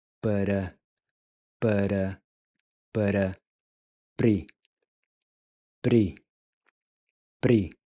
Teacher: the R here is going to sound more like a soft D, where your tongue just barely taps the ridge right above your front teeth.